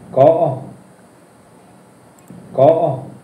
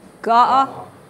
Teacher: K is a blend of K and G, but it sounds more like a G at the beginning of the words.